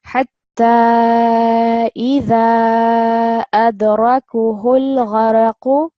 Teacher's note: But now you've added the mad saghir, we're not reading the alif as a separate letter. We're reading as idha, but we're just prolonging the a part.